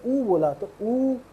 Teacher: मेरा मुंह आगे गोल हो गया। और मैं बड़ा ऊ बोल रहा हूं।